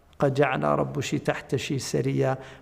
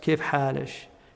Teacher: I mean, the reason it's a shadh qira'ah, but the reason it's interesting is because the dialect that you find in the Gulf Arabs, kif halish, you know, they use the kaf, they pronounce it like a sheen or a ch sound